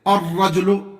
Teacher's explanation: لام نہیں پڑھا جائے گا کیونکہ یہ لام کے بعد میں آنے والا جو حرف ہے وہ حرف شمسی میں سے ہے. الرجل، لام لکھا جائے گا لیکن پڑھا نہیں جائے گا